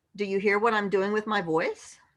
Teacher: a quality in speaking of raising your voice at the end of your sentence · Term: up speak